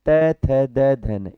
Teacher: हमारी जीभ दांतों से टकराती है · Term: त वर्ग